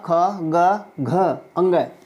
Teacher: वन आवर के सभी वर्ण का क ख ग घ अंगा यह सभी कंठ से उच्चारित होते हैं